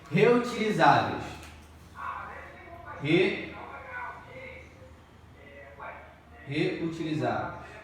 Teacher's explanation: Aqui nós vemos que a penúltima sílaba é a tônica. Então é uma paroxítona.